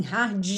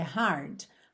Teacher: Gente, não tem vogal, não tem um i depois desse d, então não pode ser d, é hard, tá?